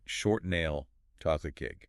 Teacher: the stress lands on the noun, right? The main thing being described